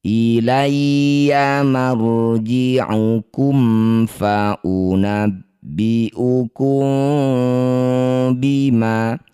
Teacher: Cara bacanya bunyi mim dengungkan dua harakat. Posisi bibir rapat tapi masih ada celah satu lembar kertas ya. · Mim sukun bertemu bukan mim bukan juga ba. Cara bacanya bunyi mim sukun baca dengan jelas tanpa dengung. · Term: ikhfa syafawi